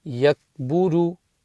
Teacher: the kaf, not a qalqala letter, so there's no bounce there